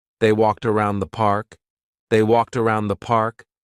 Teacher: We're going to connect walked and around.